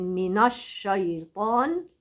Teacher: الطاء بس هي اللي مفخمه